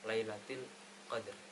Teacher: maka dibaca secara jelas lailattil Qadr yang terakhir adalah terdapat ro ro tersebut dibaca tafkhim atau dibaca tebal karena wakaf ya wakaf dan didahului huruf sukun selain ya dan sebelumnya terdapat